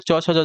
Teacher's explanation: च छ आपका तालव्य हो जाएंगे